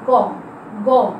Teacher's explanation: এই ধ্বনিগুলো উচ্চারণ করার সময় বাতাস কম, জোর কম লাগে বলেই সেগুলোকে বলা হচ্ছে অল্প প্রাণ